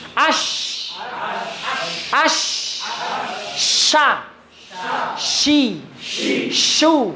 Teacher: ada suara mendesis yang kasar sekali. Tafasir namanya.